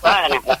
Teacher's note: when you say for crying out loud, you got to leave that ing ending out.